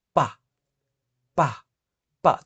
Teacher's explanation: చూడండి ప అన్నప్పుడు 2 పెదాలు వస్తున్నాయి కాబట్టి బైలాబియల్.